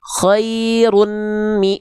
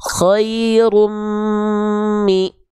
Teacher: Karena yang kedua bunyi an-nya dileburkan, didengungkan, ditahan 2 harokat.